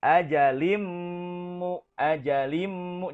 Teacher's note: dimasukkan tanwinnya ke dalam huruf mim maka hukum bacaannya adalah Idgham Bighunnah